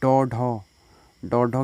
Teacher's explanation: ये मूर्धन्य उच्छिप्त ध्वनियाँ हैं